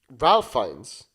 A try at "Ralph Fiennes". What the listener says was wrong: Ray Fiennes. His name's actually pronounced Ray Fiennes. I thought it was Ralph as well.